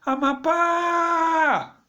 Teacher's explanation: você vai perceber que a última sílaba é tônica